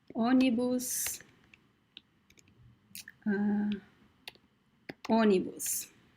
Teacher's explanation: In this word, we actually have the nasal on sound. So even though you see the graphic accent, the circumflex accent, whenever you see the letter O followed by the letter N, you find a nasal sound.